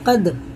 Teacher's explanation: دال میں قلقلہ سخت پڑھتے ہیں، اس کے مخرج ٹکر کھا کے الگ ہو جاتے ہیں